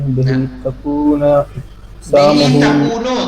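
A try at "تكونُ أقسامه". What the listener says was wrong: تکونو پڑھیں گے، تکونا نہیں.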